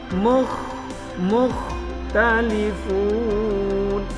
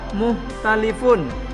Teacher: Kho sukun itu harus keluarnya di kerongkongan